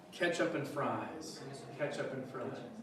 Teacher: Yeah, as long as you stress that first syllable, if it's ketchup or ketchup, more or less I'll understand what you're saying. But yeah, I'll oftentimes pronounce it with the eh, sound like in bread